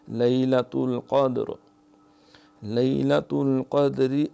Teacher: قاف جو ہے اس کے اوپر زبر ہے تو زبر اور پیش کی حالت میں یہ تفخیم سے موٹا پڑا جاتا ہے